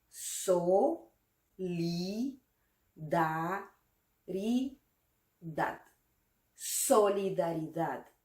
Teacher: La fuerza de voz, la intensidad de esta palabra recae en la última sílaba.